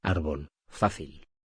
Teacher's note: Las palabras graves llevan tildes y terminan en consonante y se acentúan en la penúltima sílaba